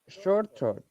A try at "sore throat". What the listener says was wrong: It is sore throat, saw, not sha. Remember we practiced.